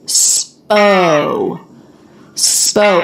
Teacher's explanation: But actually, we drop the first vowel, so it becomes just one syllable beginning with an SP cluster.